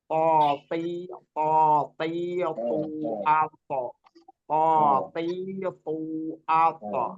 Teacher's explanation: To itu butuh penebalan, butuh isti'la. Sifatnya itu isti'lanya itu harus disertakan juga.